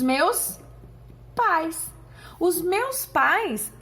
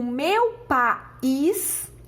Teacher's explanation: os meus pais é um exemplo de ditongo decrescente porque olha só fica tudo na mesma sílaba